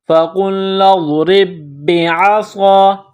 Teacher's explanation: عین کو نکالیں گے، فَقُلْنَا اضْرِبْ بِعَ، صاد الف زبر صا، صاد میں سیٹی کی آواز پیدا کرنا ہے، صاد کو موٹا پڑھنا ہے